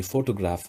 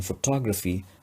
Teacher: we say photograph and then photography stress shifts to t and the length of the vowel o is shortened